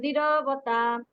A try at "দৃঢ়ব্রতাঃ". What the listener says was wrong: বিসর্গ আছে ওখানে, হ উচ্চারণ হবে, দৃঢ়ব্রতাঃ।